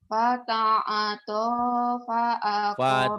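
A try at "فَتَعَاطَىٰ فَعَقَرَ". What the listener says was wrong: Fata'a to panjang. Fata'ata fa'aqara. Fata'ata fa'aqara.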